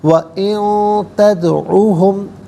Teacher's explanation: تدعو میں دال ساکن ہے لیکن حرف قلقلہ ہے تو آواز لوٹتی بھی محسوس ہونی چاہیے